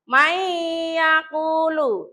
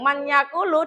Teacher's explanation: Contohnya diperhatikan ada nun sukun ketemu ya. Nah, bacanya nunnya itu lebur. Jadi, langsung masuk ke ya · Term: idgham bighunah